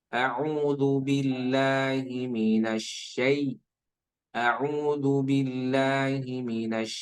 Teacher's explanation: jangan sampai terdengar menjadi e ya tapi i ya